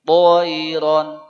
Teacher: yang masih bunyi to hilangkan bunyi hamesnya. Enggak boleh keluar nafas.